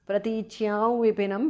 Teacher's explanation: Pratichyam vipinam because of sandhi. Anuswara changes to the nasal of va.